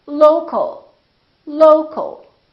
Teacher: we stress the first syllable here low low but we don't say low Kyle or low cal